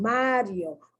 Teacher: the weak vowel i and the strong vowel o so it forms a diphthong